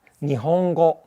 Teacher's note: But then if you have it in like Nihongo, then it becomes a velar N because the G is a velar consonant